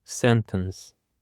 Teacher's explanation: Sentence. The stress is on the first syllable, sentence. Sentence could either be a verb or a noun, and it is mostly used in grammar.